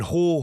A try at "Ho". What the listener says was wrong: I think it's Ho. It's like Ho, but then with like a slight G at the end.